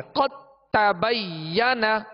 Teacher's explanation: دال کو تا میں داخل کر دیا، اب دال کی کوئی صفت باقی نہیں رہے گی، دال نہیں پڑھیں گے بلکہ تا ہی پڑھیں گے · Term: ادغام تام